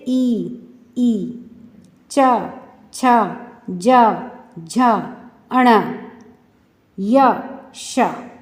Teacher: जिसमें हमारी जीभ जो है वह तालु से स्पर्श करती है तो यह तालव्या वर्णा कहलाते हैं